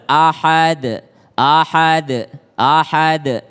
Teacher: qolqolah yang besar karena berada di akhir kalimat maka dia lebih tebel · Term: qolqolah kubro, qalqalah kubra